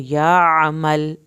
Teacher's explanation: आइन को आपने हल्क से पढ़ना है